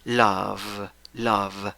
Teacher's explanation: 5 letras, 4 sonidos. El verbo original acaba en v, dentilabial. Labio de abajo, dientes de arriba.